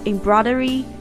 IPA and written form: ɪm'brɔɪdərɪ (embroidery)